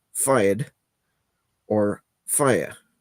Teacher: how you pronounce the word fire is actually another very strong regional thing uh whether it's one syllable or two